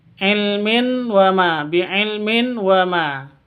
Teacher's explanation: Tanwin bertemu dengan wawu. Cara bacanya masuk ke wawu disertai dengung. Idgham bi gunnah.